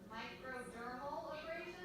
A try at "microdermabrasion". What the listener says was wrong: No, there's no L. Dermabrasion.